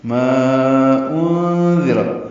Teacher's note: ما میں الف مدہ ہے اور اس کے بعد حمزہ ہے تو مد منفصل، چار حرکات لمبا کر دیں